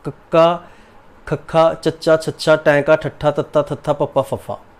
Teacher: ਅਘੋਸ਼ ਕੱਕਾ, ਪਹਿਲੇ ਦੋ ਲੈਣਾ, ਕੱਕਾ, ਖੱਖਾ, ਚੱਚਾ, ਛੱਛਾ, ਟੈਂਕਾ, ਠੱਠਾ, ਤੱਤਾ, ਥੱਥਾ, ਪੱਪਾ, ਫੱਫਾ, ਇਹ ਹੈਗੇ ਨੇ ਜੀ ਸਾਡੇ ਕੋਲ ਅਘੋਸ਼। ਇਹ ਉਹ ਧੁਨੀਆਂ ਹੁੰਦੀਆਂ ਹਨ ਜਿਨ੍ਹਾਂ ਦੇ ਉਚਾਰਨ ਵੇਲੇ ਸੁਰ ਤੰਦਾਂ ਵਿੱਚ ਜਿਹੜੀ ਵਿੱਥ ਹੁੰਦੀ ਹੈ ਉਹ ਜ਼ਿਆਦਾ ਹੁੰਦੀ ਹੈ, ਵੱਧ ਹੁੰਦੀ ਹੈ।